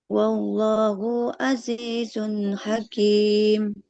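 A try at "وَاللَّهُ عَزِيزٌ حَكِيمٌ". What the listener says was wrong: Wallahu, nah haknya jangan dipanjangkan. Wallahu azizun hakim.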